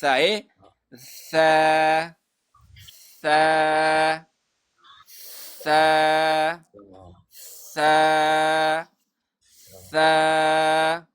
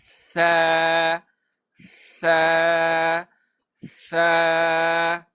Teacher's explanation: دا ده چې ثا به دې ته نرم حرف ویلی شي ثا به چې دی د ژبې د سر او بره مخامخ دوو غاښونو د سرونو نه ادا کېږي